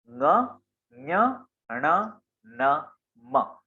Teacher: इनका उच्चारण इनके समूह के अनुसार तो होता है, परंतु उसके साथ नासिका का प्रयोग भी होता है। मतलब ये जो ङ है, इसका उच्चारण कंठ और नासिका दोनों के प्रयोग से होगा। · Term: अनुस्वार